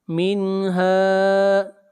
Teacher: نون ساکن کے بعد حروف حلقی میں سے ہا ہے، اظہار حلقی ہوگا